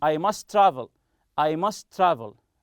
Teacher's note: must travel as if it is one t